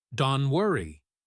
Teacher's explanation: The T at the end of don't usually disappears completely when it is followed by a consonant sound like the W in worry.